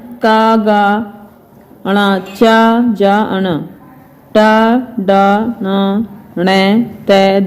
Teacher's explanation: इनके उच्चारण में श्वास वायु कम मात्रा में बाहर आती है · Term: अल्पप्राण